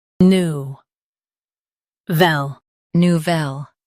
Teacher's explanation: Emphasize velle with a soft nou.